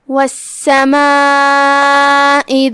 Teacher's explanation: یہاں سین پہ تشدید ہے، لہذا دو حرف کے برابر ہم سین کو ادا کریں گے، کیونکہ تشدید کی اصلیت دو حرف ہوتی ہے، حرف ساکن اور حرف متحرک.